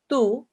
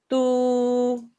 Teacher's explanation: the sound stays the same but it gets stretched for two seconds · So the sound stays the same, but it gets stretched for 2 seconds. So where you would normally say here, tu, if there's a waw mud straight afterwards, you say tu, 2 seconds. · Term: waw madda